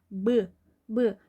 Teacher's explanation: nə qədər eləsəz də Bda P kimi bir nəfəs almırsız əlinizə. Deməli B cingiltilidir ki, o dərəcədə nəfəsiniz əlinizə dəymədi.